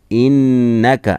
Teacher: इन्नका नून में गुन्ना होगा, चूँकि नून मुशद्दद हो तो उस पर गुन्ना होता है, नाक से पढ़ेंगे